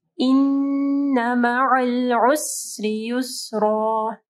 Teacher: نون کے اوپر غنہ کرنا ہے، نون مشدد ہے، عین کو واضح پڑھنا ہے